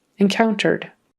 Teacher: That ED on the end just becomes a D.